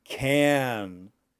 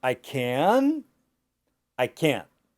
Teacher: And can't, because of the T on the end, the sound is shorter. They both have the same sound.